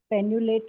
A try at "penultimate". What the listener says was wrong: Penultimate, not penul, penultimate.